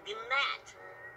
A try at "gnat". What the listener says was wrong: It's a G. Silent. It's gnat.